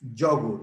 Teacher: In English is yogurt. The accent goes in the first syllable.